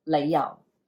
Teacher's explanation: you're going low rising for the lay, and then low falling 由